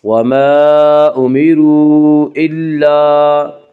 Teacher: ہمیشہ مدہ ہوتا ہے، الف سے پہلے ہمیشہ زبر ہوتا ہے، الف مدہ کو 1 الف کے برابر کھینچ کر پڑھیں گے